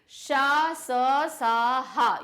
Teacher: ये ऊष्म है, इनको बोलते समय आवाज रगड़ रही है, तो इसलिए इनको क्या बोलते हैं, ऊष्म व्यंजन।